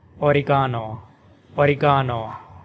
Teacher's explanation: with the stress on the third syllable ga